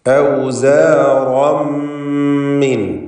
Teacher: തൻവീനിനെ പൂർണ്ണമായി മീമിലേക്ക് ലയിപ്പിച്ച് ഇദ്ഗാം ബിഗുന്ന ചെയ്ത് മണിച്ചുകൊണ്ട് ഉച്ചരിക്കണം. അപ്പോൾ ഷദ്ദുള്ള മീമിൻ്റെ ശബ്ദം മാത്രമേ കേൾക്കുകയുള്ളൂ. തൻവീൻ ഉച്ചാരണത്തിൽ ഉണ്ടാവുകയില്ല, കാരണം അത് ലയിപ്പിക്കപ്പെട്ടു.